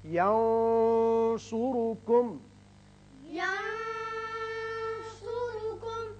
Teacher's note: نون پر آپ نے آواز تھوڑی سی گول کر کے موٹی سی نکالی ہے، اور صاد کی وجہ سے، صاد حروف مستعلیہ میں سے، ینصرکم۔ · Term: اخفاء